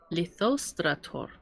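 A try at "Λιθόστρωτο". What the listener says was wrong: Lithostroto. Lithostroto. Litho. Lithostroto. Stroto. Lithostroto. Well, why do you get the R on the end there?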